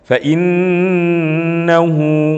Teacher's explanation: cara bacanya itu dengan gunnah dalam pengertian mendengung, ditahan sedikit berkadar kira-kira 1 alif atau 2 harokat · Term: bacaan gunnah